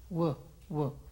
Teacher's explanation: Las cuerdas vocales vibran al decir wu